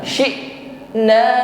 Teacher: Karena natijata ghalqil makhraj. Makhraj huruf hamzah ini ketika sukun tertutup dengan sempurna. Syi'na, jadi tidak boleh ada bunyi lagi syi'a, tidak, bersih.